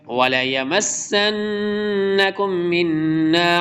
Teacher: نون مشدد ادغام اور غنہ دونوں چیزیں ہوگی